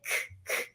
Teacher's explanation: you can feel your fingers are not vibrating, so it's an unvoiced sound